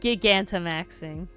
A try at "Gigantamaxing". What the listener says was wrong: The same letters, but it's supposed to be the word giant and max. Okay, but you didn't say Giga, you said Gigans.